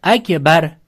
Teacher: Qanday qaranglar ro sukun undan oldingisiga qaranglar ro sukun bo'lsa undan oldisiga qaraladi. Ro sukun undan oldin fathami bo'ldi. Demak ro yug'on o'qiladi.